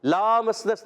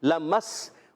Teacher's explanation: لام پر زبر ہے، حرکت ہے، کھینچنا نہیں، لامسنس نہیں، لمس، اور میم کو سین سے ملا دیں گے، لمسنس، اور پھر نون کو سین سے ملا دیں گے، یہ بھی الف نہیں پڑھیں گے، ٹھیک ہے۔